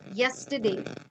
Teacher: do we call it a semi wobble because it kinds of it starts with a consonant sound but it goes into a vowel sound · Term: semi vowel